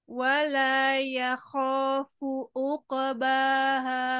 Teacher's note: Fu-nya tidak monyong, harusnya dimonyongkan.